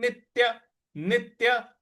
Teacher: नित्य नी के बाद जो आधा त है उस पर हमको आघात देना है।